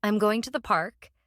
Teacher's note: the emphasis is on going and park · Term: stressed words